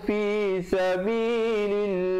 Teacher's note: Lafzul jalalah datang sebelumnya baris kasrah, dibacakan nipis.